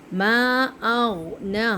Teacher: حمزہ کو غین کے ساتھ پکڑنا ہے، جھٹکا نہیں دینا